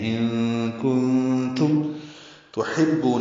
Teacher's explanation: ہا وسط حلق سے نکالیں گے، با سے ملائیں گے، بو واو مدہ ہے، 2 حرکات لمبا کریں گے